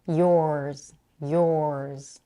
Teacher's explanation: Notice how she elongates the vowel o